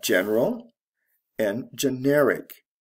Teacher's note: the stress shifts from the first to the second syllable al to ic this is from an adjective to another adjective